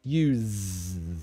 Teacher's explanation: that's the voiced z like a zed